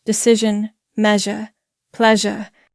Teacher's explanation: The zh sound is a voiced consonant and it's the voiced version of sh. We call it zh because English doesn't have a consistent spelling for it.